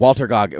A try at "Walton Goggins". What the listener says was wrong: Walton. It's actually Yeah, not Walter. I thought it was Walter, but it's Walton.